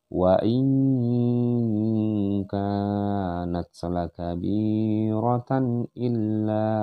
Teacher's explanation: didengungkan nun mati menghadapi huruf kaf, maka dia disebut dengan ikhfa juga. Jadi harus ada dengung atau penekanan di sini.